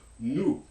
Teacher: In French, there's a third back-rounded vowel, as in nous, which means us or we.